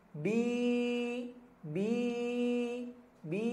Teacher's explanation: kasrah bertemu dengan ya sukun. Ya, bi dibaca panjang. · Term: bacaan panjang